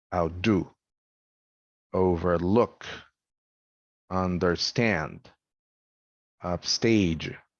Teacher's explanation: the verb has primary stress when that happens the prefix has secondary stress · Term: prepositional prefixes